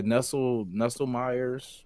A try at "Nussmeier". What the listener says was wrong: No, there's no LE. It's just NUSSMEIER.